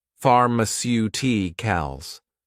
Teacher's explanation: stress on the third to last syllable